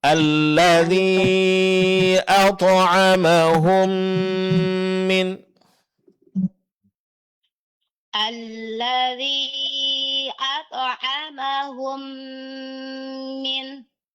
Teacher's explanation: dengung mim sukun bertemu dengan mim. Yaitu idgham mimi juga dipraktikkan ya, Bu. Ya, persis seperti mim yang bertasydid.